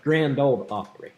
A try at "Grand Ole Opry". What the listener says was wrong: grand ole opry yes the the d is silent